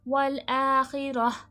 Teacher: والآخرہ، تا کا وقف جب بھی ہوتا ہے، یہ جو گول تا ہے اس کی آواز کو ہم ہاں میں بدل دیتے ہیں۔ والآخرہ، جب بھی قرآن مجید میں یہ گول تا آئے گی اور اس کا وقف ہوگا تو تا کی آواز ہاں میں بدل جائے گی۔